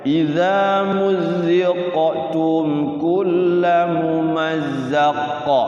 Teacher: Kitanya pengen wakaf karena nafasnya habis, maka otomatis qafnya itu dikolkolahkan. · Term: kolkolah kubro